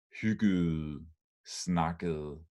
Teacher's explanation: So this ending ede, ede, is not pronounced as two syllables, only like one, as one.